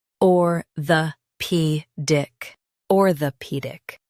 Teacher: Stress P and keep dic light. It's smooth.